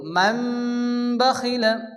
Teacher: তানভীন বা নুন সাকিন কে মিম দ্বারা পরিবর্তন করে পড়তে হবে এবং এক আলিফ গুণনা করতে হবে